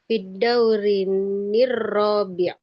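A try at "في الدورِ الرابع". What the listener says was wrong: Enggak nir lagi. Fi dawri fi dawri ar-rabi atau fi dawri rabi, langsung masuk aja. Karena di sini tidak terjadi dua sukun yang bertemu, Bu.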